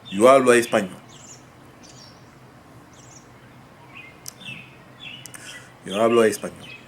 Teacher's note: if that O doesn't have an accent mark and it's at the end of a word and it links with another vowel, what happens is it becomes a weak vowel like U. It's almost a U sound. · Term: linking